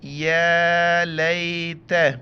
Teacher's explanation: یا کے اوپر کڑا زبر ہے، 1 الف کی مقدار کھینچنا ہے